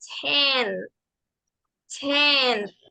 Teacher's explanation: de esa t siendo fuerte como lo es en el español en el inglés la t tiene más aire suena más suave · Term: con aire